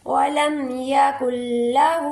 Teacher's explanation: ہا کے اوپر الٹی پیش ہے، اس کو ایک الف کے برابر کھینچیں گے